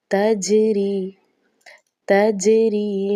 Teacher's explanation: تا کے بعد جو جیم ہے، چونکہ یہ ساکن بھی ہے اور حروف قلقلہ میں سے بھی ہے تو یہاں پر قلقلہ خوب ظاہر ہوگا